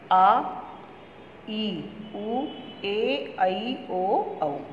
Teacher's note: दीर्घ स्वर, दीर्घ में ह्रस्व से दुगना समय लगता है। इन स्वरों के उच्चारण में ह्रस्व की तुलना में दुगना समय लगता है।